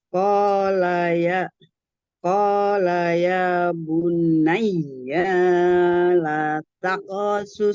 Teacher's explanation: ya tasdidnya ditekan saja. Tapi bukan nun yang tasdid ya, nunnya tidak bertasdid.